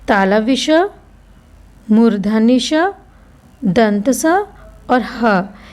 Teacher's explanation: इनको बोलने पर गर्म वायु बाहर निकलती है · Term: ऊष्म वर्ण